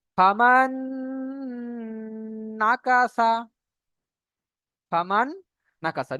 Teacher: নুন সাকিনের পরে নুন এসছে এখানেই পরিমাণ গুণনা করে পড়তে হবে